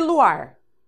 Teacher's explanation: eu tenho uma dissílaba duas sílabas a sílaba mais forte é a última então eu tenho uma oxítona só que oxítona terminada em r